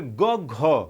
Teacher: ग पे कम बल पड़ रहा है और घ पे ज़्यादा पड़ रहा है